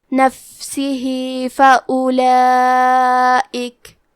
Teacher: کلمت نفسہی میں فا ساکن ہے، لہذا ہمیں فا کو ہمزے سے پڑھنا ہے، نفسہی۔ آخری میں ہا کے نیچے کھڑی زیر ہے، یہاں حکم ہے مد صلہ صغرا، تو ہم اپنی آواز 2 مد کے برابر لمبی کریں گے